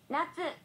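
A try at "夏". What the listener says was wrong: That doesn't sound right. Natsu. It's natsu. Questionable pitch accent.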